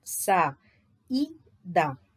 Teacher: I tônico formando hiato com a vogal anterior